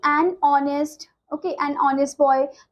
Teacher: honest h से start हो रहा है, जिसमें कॉन्सोनेंट वाला लेटर है, बट साउंड इसकी कैसी है, वॉवल वाली है, ठीक है, तो इसलिए हमने and का यूज किया है, ओके। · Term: vowel sound